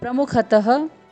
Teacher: त में विसर्ग है, इसीलिए ह की ध्वनि आएगी।